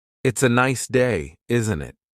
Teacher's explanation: The tone going up at the end tells the listener that you're asking a question. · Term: intonation